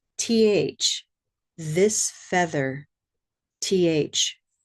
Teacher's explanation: You want to place your teeth on your tongue and gently push the air through with your voice.